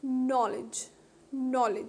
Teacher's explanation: knowledge has also got two syllables the stress is on the first one that is k n o w l this is the first